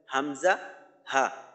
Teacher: পড়তে পারি বা এইখানে যেভাবে বর্ণনা দেওয়া আছে এক নাম্বার মাখরাজ এক নং মাখরাজ কণ্ঠনালী বা হলের শুরু হইতে উচ্চারিত হয়